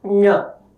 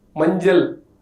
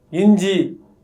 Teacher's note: The letter Nya is called palatal nasal. To pronounce the sound, the middle of the tongue is placed against the hard palate and at the same time air is released through nasal cavity.